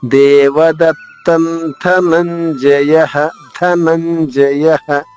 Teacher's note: న పొల్లుగా ధనంజయః మళ్లా న పైన ఘాత తీసుకుంటూ న్ ద్విత్వం చేసుకుంటూ చివరిగా ఉన్న విసర్గ ఉచ్చారణ హ హ లా పలకాలి దేవదత్తన్ ధనంజయః ధనంజయః మూడవ చరణం